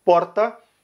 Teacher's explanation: No Rio Grande do Sul é o R enrolado